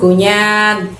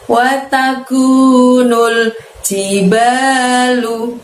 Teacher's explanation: Wataku, kunya tadi pangkal lidahnya tidak perlu menyentuh langit-langit ya, tipis ya. Wataku, kunya panjangnya 2 harokat, nul pendek nulnya, jiba banyak panjangnya 2 ya, lalu lu watakunul jibalu.